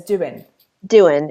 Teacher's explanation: people pronounce the ing endings as in